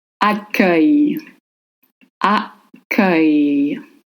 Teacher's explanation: So the double C makes the sound K. And then the cluster U-E-I-L will sound close to the A sound in butter, followed by a Y sound